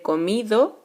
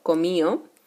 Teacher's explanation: la pérdida de la D intervocálica